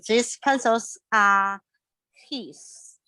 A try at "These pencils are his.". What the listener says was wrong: Okay, and again with this E sound, make sure you make it a clear E. These.